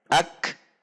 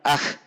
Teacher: ak tertahan terlebih dahulu, kemudian ada sisa udara yang mengalir. Ak, tidak langsung kepada mengalirnya udara. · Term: asyiddah